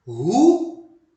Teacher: E no dia a dia, no cotidiano, muitas pessoas pronunciam ruim como se fosse um ditongo, Como se o U ficasse com o I na mesma sílaba, quando na verdade ocorre um hiato. O U fica numa sílaba, o I vai para outra.